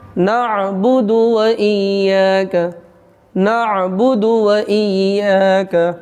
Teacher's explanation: یہاں پہ دال پیش دو کو کھینچیں گے نہیں، اس لیے کہ زبر زیر اور پیش کو جلدی پڑھنا ہے.